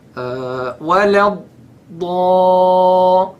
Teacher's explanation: Another mistake, this is also common, cutting the dad. Many qurra, I hear them, they say wala da. They stop in the middle of the dad.